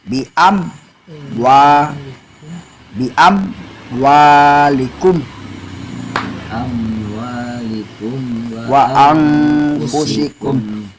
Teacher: Oh, jadi harus tahu, jadi harus bacanya idhar itu jelas, safawi itu di bibir. Di bibir harus jelas, gak boleh didengungkan. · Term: idhar safawi